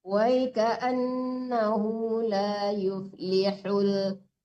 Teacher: H kecil di tengah-tengah tenggorokan beda dengan H besar.